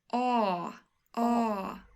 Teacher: if you want to sound Swedish I highly recommend you to make the a sound very long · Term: ah sound